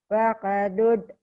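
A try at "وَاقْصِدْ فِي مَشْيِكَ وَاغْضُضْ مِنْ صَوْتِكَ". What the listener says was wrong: Jangan ada e-nya. Waqbud.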